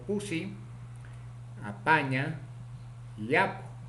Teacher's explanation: Consonante PA, oclusivo simple, bilabial, sordo, ocurre en posición inicial, medial y final